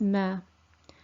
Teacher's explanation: sound is mer and it's similar to the english m so the articulation point is between the two lips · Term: meme